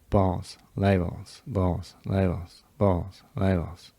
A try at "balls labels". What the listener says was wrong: Just go a little softer when you're just doing the balls out of sound. It feels like we're doing balls. Like the placement shoots higher on the word than it does individually. And I'd like it to be the same.